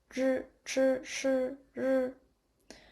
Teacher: They are produced with the tongue tip curled back towards the heart pallet. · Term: retroflex sounds